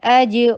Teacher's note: فتحہ کے لیے جبڑے کو کھولیے, جیم کے اوپر قلقلہ کیجیے